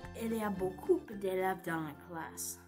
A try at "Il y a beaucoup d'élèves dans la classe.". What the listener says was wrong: On ne dit pas beaucoup, on dit beaucoup. On ne prononce pas le P.